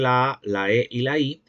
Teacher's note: estos timbres son no labializados, es decir, que en su articulación los labios no se abocinan o se redondean